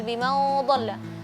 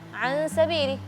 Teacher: Gunnah ikhfa setelahnya huruf dhad, dhad itu huruf tebal, jadi gunnahnya tebal